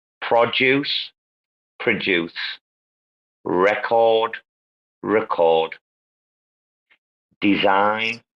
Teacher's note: on the noun, it's always the first syllable, but on the verb, it's always the second syllable